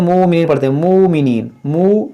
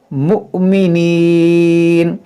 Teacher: یہاں پر جہاں جہاں بھی اس طرح حمزہ آئے تو اس واو کو نہیں پڑھیں گے، اس کو حمزہ کو ہی پڑھیں گے. اور حمزہ جب ساکنہ ہوتا ہے تو اسے جھٹکا دے کر پڑھا جاتا ہے. جیسے مؤمنین، بعض لوگ غلطی کرتے ہیں مومنین پڑھتے ہیں، مومنین، مو اس کو مو نہیں پڑھنا ہے بلکہ میم حمزہ پیش مؤمنین. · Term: حمزہ ساکنہ